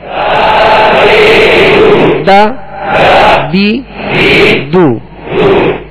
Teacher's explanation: تو دال کو ادا کرتے ہوئے باریک پڑھیں گے